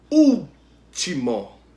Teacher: O u é a sílaba tônica, antepenúltima sílaba, né? Então ela é proparoxítona.